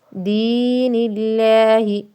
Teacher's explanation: لفظ اللہ باریک کیونکہ لفظ اللہ سے پہلے زیر ہے